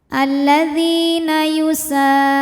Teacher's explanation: dzi mad tabi'i dhahiri karena ada ya sukun didahului harokat kasrah, maka dzal panjang 2 harokat.